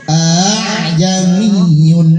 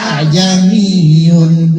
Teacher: Baik, nomor 11 tulisannya a'jamiyun, bacanya a'jamiyun. Jadi meringankan hamzah kedua. Namanya bacaan tashil. Bacaan tashil, hamzah kedua ringan bacanya.